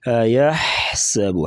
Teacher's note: أيحسب أن لم يره أحد. یحسب گلے سے آواز نکالیں گے، واضح طور پہ سین سیٹی جیسی آواز کے ساتھ پڑھیں گے